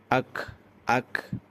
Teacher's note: কাফ জবর আক একটু বাতাস বের হবে